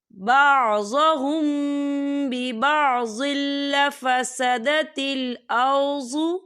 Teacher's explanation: یہاں میم ساکن ہے اور میم ساکن کے بعد پھر با آ رہا ہے، تو یہاں پر اخفا شفوی ہوگا اور یہاں پر غنہ بھی ہوگا